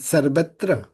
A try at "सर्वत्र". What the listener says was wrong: স্যার, এটা উচ্চারণটা আমাদের র উচ্চারণটা করতে হবে। সংস্কৃতে, হিন্দিতে, বাংলা কিন্তু র উচ্চারণটা স্পষ্টভাবে হয়। আপনার জিহ্বা ভাইব্রেট হবে, ভাইব্রেট, উচ্চারণ করতে হবে স্যার। সর্বত্র, সর্বত্র।